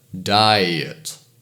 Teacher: a good example is Diet it goes from a to e to uh